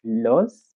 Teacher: the pitch is medium from the beginning to somewhere at the middle and uh towards the end there is a falling intonation